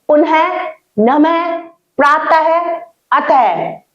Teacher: तरह की दो बिंदी लगी होती है जिसे विसर्ग कहते हैं विसर्ग का उच्चारण अह वर्ण के समान होता है